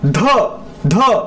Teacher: तर ध ध ह ह महाप्राण आहे. प्राणवायू जोरात फेकला जातो, ह मिक्स आहे, द अधिक ह ध बनतो